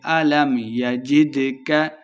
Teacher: دال ساکن ہے، حروف قلقلہ سے خوب واضح کر کے پڑھیں گے۔